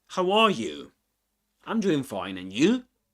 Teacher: And we stress the U at the end because we're interested in the other person now. Okay. So, we he stresses both times these words.